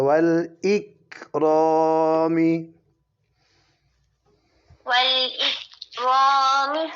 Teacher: یہ کاف کش والا اس پہ نہیں کلکلا ہوتا.